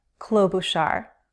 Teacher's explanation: 3 syllables and the first syllable is stressed.